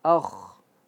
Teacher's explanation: A akh akh jelas ya. A-nya tipis. Khya juga khannya jadi tebal. Akh. Jangan ikut a-nya jadi tebal.